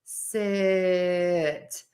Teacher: the short I is too long and too tense